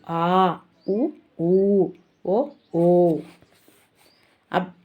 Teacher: ఉత్తర స్వరం నాలుక కొంచెం వెనుకకు జరిగి పెదాలు గుండ్రంగా తయారవ్వడం వలన పుట్టే అచ్చులు ఉత్తర స్వరాలు